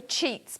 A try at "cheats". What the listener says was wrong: Cheat. Cheat, not cheap. Cheat.